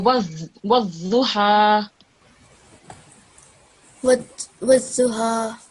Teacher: the edge of your tongue should be touching the left upper teeth when you're saying this word